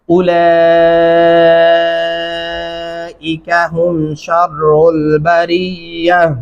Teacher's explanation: یہاں پہ تا کو ہا میں بدلنا ہے، بھاری آواز محسوس ہونی چاہیے. اور یہاں پہ 4 الفی مدہ 4 الف کے برابر تک آپ لمبا کرتے رہیں گے.